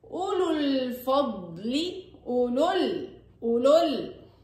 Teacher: أنا لفظت لام مضمومة، لام ساكن، أولو بسبب التقاء الساكنين اللي هو حرف المد واللام الساكنة سقط حرف المد في الوصل